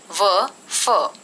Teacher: दंतोष्ठ्य, नीचे का होठ और ऊपर का दांत